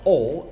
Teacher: the vowel O is exactly a mid-low, back, rounded vowel